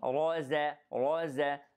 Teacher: and then الراء is heavy, raza, the zay is light, qaf has qalqala and it is heavy, and the noon is light after that.